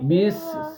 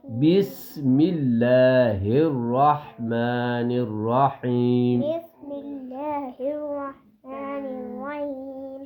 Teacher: سین سیٹی کی طرح اس کی آواز آئے گی